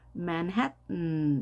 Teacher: 이 t가 양쪽에 모음이 있게 되면 발음이 약하게 납니다.